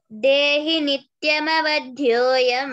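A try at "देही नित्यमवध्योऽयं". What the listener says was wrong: దేహి అంటున్నారు అంతే. ఎందుకు దేహి కదా? అందరికి చెప్తున్నారు కదా నేను. దేహి హీకి దీర్ఘం ఇవ్వాలమ్మి.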